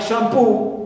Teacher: For u, like shampoo, so poo is stressed here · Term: primary stress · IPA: / ∫ æm'pu: /